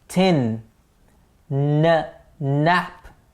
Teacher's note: the tip of the tongue or the blade of the tongue is going behind the top teeth at the ridge of the gums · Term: alveolar sounds